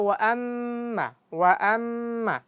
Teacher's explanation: mim kalau bertasydid dia dibaca panjang. Panjangnya sama dengan ketika idam ghunah.